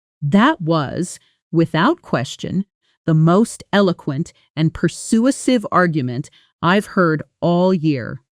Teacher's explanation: Notice how eloquent and persuasive both receive strong stresses, while the smaller connecting words was, without, the, most, and are all spoken more quickly and quietly. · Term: natural rhythm